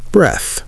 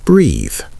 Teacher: Breath is short and stopped. Breathe is longer and open.